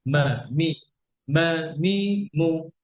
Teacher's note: pronounced from the dry part of the both lips, the meme is articulated by closing the two lips together.